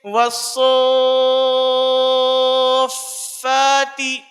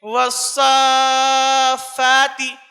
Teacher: مد کے بعد تشدید کی ادائیگی میں 2 حرفوں کی تاخیر کریں گے